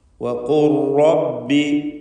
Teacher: ലാമിൻ്റെ ശബ്ദം അല്പം പോലും ഉണ്ടാവില്ല. സാക്കിനത്തായ ലാമ് ലയിപ്പിക്കേണ്ട സന്ദർഭമാണിത്. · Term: ഇദ്ഗാം കാമിൽ